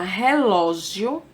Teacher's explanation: a palavra relógio pode observar que existem ou aqui duas letras duas vogais na mesma sílaba sendo que primeiro vem uma semivogal depois vem uma vogal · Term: ditongo crescente